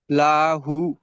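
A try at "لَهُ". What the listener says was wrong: লা টান হবে না লা টান দিচ্ছেনরা হু টান হবে হু টান দিচ্ছেন না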